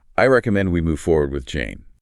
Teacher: the falling intonation signals much greater conviction